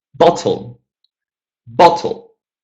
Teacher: let's switch the stress and let's stress the first syllable